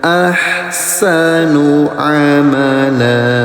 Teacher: Berhenti di fathah tain, bunyi tanwinnya dirubah jadi panjang. Yang asalnya amalan jadi amala.